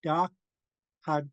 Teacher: We're kicking the K from the middle of the mouth.